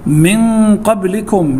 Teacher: نون ساكنة بعد حرف القاف، والقاف من حروف الإخفاء